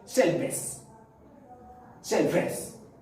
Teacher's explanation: la V dentro del inglés es parecida a la F, pero date cuenta que es bilabial, o sea que estoy utilizando mis labios. Cuando la F tú haces es diente, labio, pero cuando la B la utilizas es shelfes.